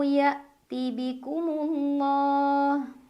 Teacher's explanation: Karena ada alif lam menghadapi huruf syamsiyah yaitu lam, maka cara membacanya alif lam tidak dibaca. Jadi dari mim diidghamkan langsung ke lam jalalah. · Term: alif lam syamsiyah